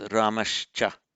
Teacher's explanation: If you say and Rama, Ramahcha, that becomes Ramashcha. So it changes to a sibilant, but with a sh. Same point of articulation, shcha, both palatals.